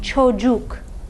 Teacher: U is a back rounded vowel.